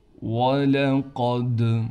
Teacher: قاف کو موٹا کر کے پڑھیں گے، دال پر قلقلہ کیا جائے گا